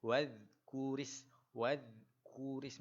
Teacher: bacaan huruf dal tuan-puan, bacaan dia kena keluarkan lidah